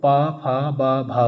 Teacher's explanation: ओठों से जो उच्चारण हुआ है वो पा, फा, बा, भा का उच्चारण ओठ से हुआ है।